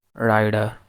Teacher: alveolar flap, which is usually used in between two vowels like rider